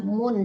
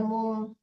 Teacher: izhar harus jelas mun jangan mum mun tekannya ke nun